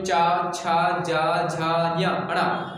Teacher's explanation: आपकी जो जीभ होगी, आपकी जेवा होगी, वो तालु को टच करेगी, तालु को स्पर्श करेगी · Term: तालव व्यंजन